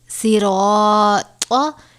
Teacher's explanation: یہاں پر را کے اوپر زبر ہے اس لیے ہم را کو پر پڑھیں گے، اور را کے بعد طا ہے، طا حروف مستعلیہ میں سے ہے جسے ہمیشہ پر پڑھا جاتا ہے، لہذا یہاں پر را اور طا دونوں کو پر پڑھا جائے گا